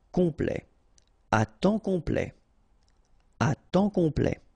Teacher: OM is nasal here, just because you get your P after that, so it's on, complet, à temps complet, à temps complet.